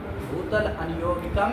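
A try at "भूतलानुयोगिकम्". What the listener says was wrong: भूतलानुयोगी संधि कर लोगे,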